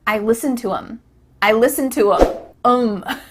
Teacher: The word them has the TH cut out, and instead you're saying I listen to him.